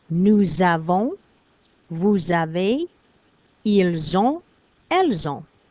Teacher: And again, I have this little Z here to remind me of a necessary liaison that I have to make with the S and the vowel